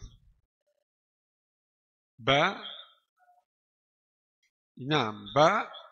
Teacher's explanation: ba dari dua bibir, rapat dua bibir.